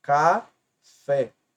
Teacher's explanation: observe a última sílaba ela é tônica Ou seja é a mais forte C fé e é terminada em é portanto leva acento e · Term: sílaba tônica